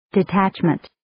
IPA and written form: dɪ'tætʃmənt (Detachment)